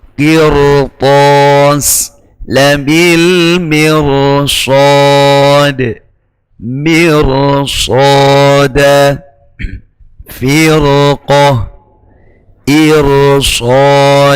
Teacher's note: Itu huruf ra dibaca tafkhim meskipun dia jatuh setelah kasrah dikarenakan berhadapan dengan huruf isti'la.